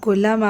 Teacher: کلما آپ کے اوپر مد آ رہی ہے، مد جائز چھوٹی مد، 2 الف اس کی مقدار ہے اور اس کے ساتھ میں الف مد آ رہا ہے تو 3 الف اس کو کاؤنٹ کریں گے۔